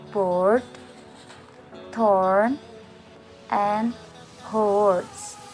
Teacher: This vowel is almost fully back and has quite a strong lip rounding.